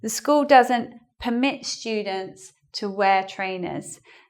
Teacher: So it's not per anymore; it's pe, pe-MIT.